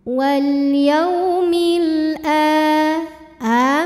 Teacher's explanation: Kemudian alif lamnya dinamakan dengan alif lam qamariyah karena alif lam menghadapi huruf qamariyah yaitu hamzah. Maka lam sukun dibaca jelas. Wal yaumil a mad badal karena ada hamzah yang dipanjangkan.